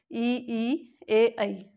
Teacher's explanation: तो इनको बोलते समय जिह्वा का अगला भाग जो है सक्रिय है, इसलिए इन्हें अग्र स्वर बोलते हैं